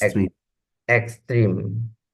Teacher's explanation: the X, there are two sounds, the K and the S. So that's why we sound like extreme, extreme, sound like Ex extreme.